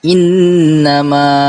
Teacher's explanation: Apabila ada nun sabdu atau tasydid dalam satu kalimah, hukumnya adalah wajibul gunnah. Panjang bacaannya dibaca sebanyak 2 atau 3 harakat dan wajib dengung.